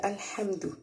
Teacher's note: الحمد ال جو ہے اس میں ہم لام کو نرمی سے ادا کریں گے ہا میم زبر ہم ہا کو حرف حلقی ہے حلق سے